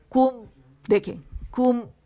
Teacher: अच्छा, या के लिए आवाज काउंट के लिए ऊपर जाएगी, कुम, और ये भी बारीक है, ये भी बारीक है, ये भी बारीक, सीन आइन या, ये तीनों बारीक है, कैफ भी बारीक है, मीम भी। कुम के लिए क्या होगा कि होंठ गोल होंगे, मुकम्मल तौर पे रोल करेंगे, और मीम साकिन पे आके आवाज इसकी खत्म हो जाएगी, कुम, ठीक है। · और जब आप मीम पे आवाज खत्म करेंगे काउंट के लिए, तो नाक में आवाज चली जाएगी, गुन्ना वहां से आपको फील होगा